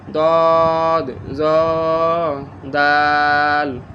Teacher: দদ জিহবার গোড়া হইতে মোটা আওয়াজে, জ জিহবার আগা হইতে মোটা আওয়াজে, দাল জিহবার আগা হইতে পাতলা আওয়াজে